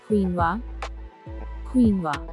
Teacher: First syllable is keen, and it is primarily stressed. Second syllable is wa. So correct pronunciation is quinoa.